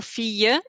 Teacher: It's always like a y sound almost when you have two L's together.